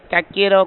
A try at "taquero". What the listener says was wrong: Oh, yeah, you're saying taquero. It's taquero. You're saying it more like tacos. Taquero.